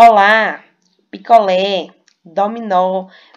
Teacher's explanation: Veja que a última sílaba da palavra é a mais forte e ela é acentuada porque terminou em A, terminou em E e terminou em O.